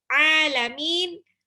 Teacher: Ain beda sama alif. Kalau ain harus masuk ke tenggorokan tengah.